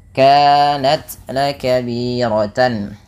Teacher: Ada izhar halqi, suara tannya dibaca dengan jelas karena adanya tanwin bertemu dengan huruf hamzah